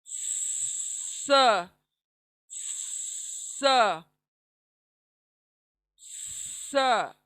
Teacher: दोनों दांत क्लोज आएंगे हमारे, ऊपर के और नीचे के, और जबान पीछे से क्लोज आएंगी, करीब आएंगी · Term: सीटी वाली आवाज